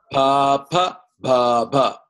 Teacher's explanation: where there's no action for tongue at all it's actually from the lips coming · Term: labials